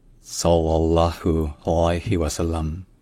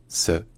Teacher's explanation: le premier son, c'est un S emphatique. C'est-à-dire, en termes techniques, c'est un S qui est pharyngalisé.